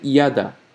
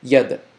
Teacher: you're not adding an a you're just bouncing the D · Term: bouncing effect